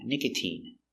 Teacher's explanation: But you have words like nicotine, where the sound is E, a long E sound, nicotine.